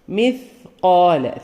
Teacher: ആ രീതിയിൽ മിസ്കാല സ മിസ്കാല പറയുമ്പോൾ സ ഈ പറഞ്ഞപോലെ നന്നായി കാറ്റോടുകൂടി സാന് സുക്കൂനും വന്നുകൊണ്ട് നാവിന്റെ അറ്റത്തുനിന്ന് കാറ്റോടുകൂടി പറയുക